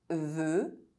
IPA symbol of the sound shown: ø